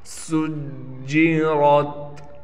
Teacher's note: وَإِذَا الْبِحَارُ سُجِّرَتْ، سین میں سیٹی نکالیں گے، سین کو جیم سے ملائیں گے اس لیے کہ جیم پر تشدید ہے اور جیم پر تھوڑا ٹھہراؤ کیا جائے گا۔ را کو موٹا کرنے کے ساتھ را کو تا سے ملا دیں گے۔